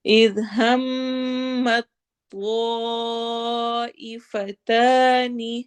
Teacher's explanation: اذ ہمت طائفتان ذال کو نرمی سے پڑھنا ہے، ہم کرتے ہوئے میم کو تو سے ملا دینا ہے، تا بیچ میں سے غائب ہو جائے گا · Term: ادغام